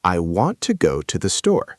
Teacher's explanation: For example, in the sentence, I want to go to the store, you stress want, go, and store. So you would say it like, I want to go to the store, with those words louder and clearer, and the other words softer and quicker. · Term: sentence stress